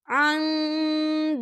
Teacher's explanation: नून साकिन के बाद दाल आ रहा है और दाल जो है इक्फ़ा का वर्ड है, तो हम यहाँ इक्फ़ा करेंगे, नून साकिन की आवाज़ को नाक में छुपाएंगे